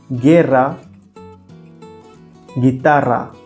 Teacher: Same rule applies to the combinations of GUE and GUI. The U is silent. It also helps to maintain the G sound as we have in the English word go.